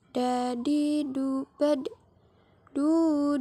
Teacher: keluar dengan cara menyentuhkan ujung lidah ke gusi bagian atas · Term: huruf da